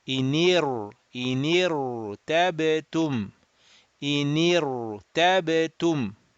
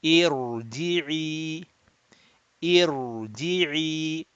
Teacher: because there's this temporary kasra, we will round the ra and we will read amir tabu, ra mufakham rounded, amir, mir, not mir, not mir, but mir, amir tabu, amir tabu, this one, inir, ra rounded, إنير تابتم إنير تابتم.